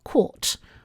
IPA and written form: kʰɔt (caught)